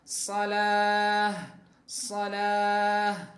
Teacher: Jadi tak marbutah ketika diwakafkan menjadi ha